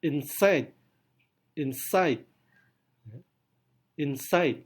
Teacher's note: Anda bisa rasakan kan, side-nya itu lebih kuat daripada in.